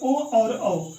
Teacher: ओ और औ स्वर का उच्चारण कंठोष्ठ से होता है